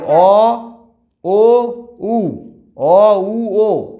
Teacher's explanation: অ উ ও এগুলো হচ্ছে কুঞ্চিত স্বরধ্বনি, কারণ ঠোঁটটা কুঞ্চিত হচ্ছে